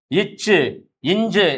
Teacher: அடுத்து இச்சு இஞ்சு என்று சொல்லுகின்ற பொழுது நாவினுடைய இடை அன்னத்தினுடைய இடையை வருவதால் பிறக்கிறது